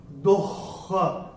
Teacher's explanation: ये तीसरे चरण में द के बाद जो विसर्ग आ रहा है उसके बाद का अक्षर है क, और विसर्ग के बाद अगर क या ख आता है तो विसर्ग का उच्चारण होगा ह। तो ये विसर्ग का उच्चारण होगा आधा ह।